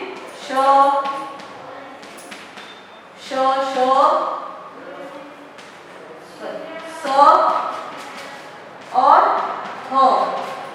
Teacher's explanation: ऊष्म व्यंजन में हवा मुंह से रगड़ के साथ बाहर निकलती है, थोड़ी ऊष्मा उत्पन्न होती है उसमें, इसीलिए ऊष्म व्यंजन कहलाते हैं, जो हैं श श श स और ह।